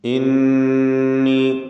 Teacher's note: നൂൻ മുശദ്ദദ മണിച്ചുകൊണ്ട് ഉച്ചരിക്കുക